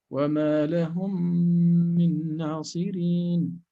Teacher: So we're going to apply here the idgham shafawi as if we are reading one single meme with shadda times 2